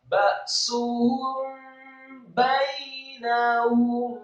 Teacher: Hukum bacaannya adalah ikhfa syafawi. Apabila mim mati atau sukun bertemu dengan ba, maka digunakan disamarkan ikhfa syafawi. Disamarkan kemudian masuk ke ba.